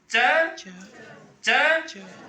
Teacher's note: च में जिह्वा का मध्य भाग तालु को टच करता है